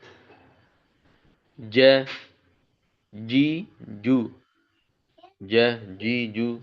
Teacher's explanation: jangan lebih ke huruf C jadinya hati-hati tuh. Pokoknya tengah lidah.